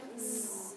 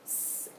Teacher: so there's a voiced s and an unvoiced S